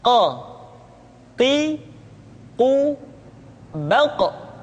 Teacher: Huruf qaf diucapkan dengan cara menyentuhkan pangkal lidah kita dengan langit-langit bagian belakang.